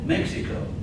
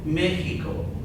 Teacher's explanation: in Mexico or other Spanish-speaking countries, you might hear it pronounced with this H sound